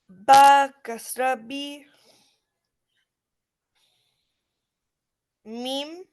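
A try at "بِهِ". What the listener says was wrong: Not meme.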